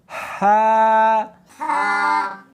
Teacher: اس کو حلق میں سے نکالنا ہے، سینے میں سے نہیں نکالنا